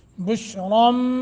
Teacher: نون تنوین کے ما بعد پہلا حرف با ہو تو اس نون تنوین کو میم سے بدل کر پڑھتے ہیں اصل میں تو تھا بشران بینا چونکہ آگے با آ گیا